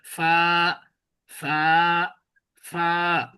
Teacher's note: ফা উচ্চারণের সময় বাতাস বেরিয়ে আসবে দুই ঠোঁটের মাঝখান দিয়ে